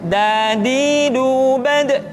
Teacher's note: kesalahan berikutnya yang sering muncul adalah melupakan sifat qalqalah yang dimiliki oleh huruf da.